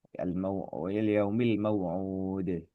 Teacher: Aslinya ketika wasal ya al-maw'udi gitu ya. Ketika waqaf maka dal kasrohnya terpaksa disukunkan ya karena sebab waqaf sehingga muncul qalqalah gitu ya. Qalqalah yang terjadi ya qalqalahnya muncul ketika waqaf saja. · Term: qalqalah kubroh